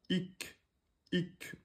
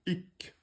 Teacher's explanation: On laisse le petit souffle. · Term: kef